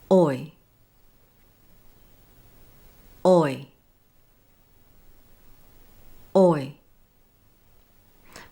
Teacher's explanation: My lips went from rounded to neutral and my tongue moved forward and upward at the same time as my jaw closed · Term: dip thong oi